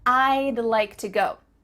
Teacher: we're cutting off all the sounds in the word would except for that final d